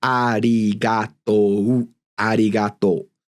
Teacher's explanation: They're all kind of equal timed, right? That's mora timed.